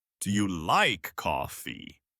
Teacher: Our voice goes down at the end of a statement and up at the end of a yes or no question